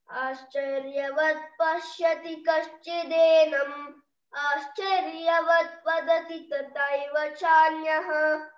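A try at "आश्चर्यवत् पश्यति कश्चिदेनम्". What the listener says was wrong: చాలా బాగా చెప్తున్నారు మీరు ఇద్దరు, చాలా బాగా చెప్తున్నారు, బాగా ఇంప్రూవ్ అయిపోయినారు,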